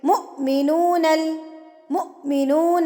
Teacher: حمزہ سے پہلے میم ہے تو میم کو جھٹکا دے کے پڑھیں گے